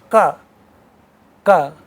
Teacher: these are velar sounds, that is coming from velum